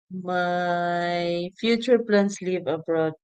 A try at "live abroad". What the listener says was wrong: You have to be careful how you say that because with your pronunciation, you say leave abroad. That can be taken as leave a woman. See, leave abroad. I'm going to leave the broad.